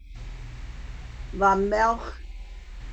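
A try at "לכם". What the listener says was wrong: No, it's not silent. It just doesn't have a vowel at the end. Lachem.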